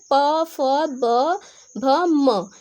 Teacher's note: प जो है वो भी ओष्ठ है, प फ ब भ म, ये जो 5 वर्ण है ये ओष्ठ ध्वनि के अंतर्गत आते हैं।